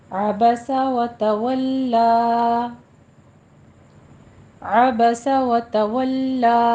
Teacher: عین کو وسط حلق سے ادا کیجیے